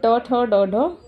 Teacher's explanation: ये टावर्ग जो है वो पूरा क्या है, मूर्धन्य से ही साउंड करता है, उच्चारित यहीं से किया जाता है।